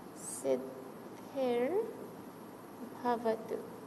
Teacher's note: so this Visarga will change to a Ra halant and we'll get Siddhir Bhavatu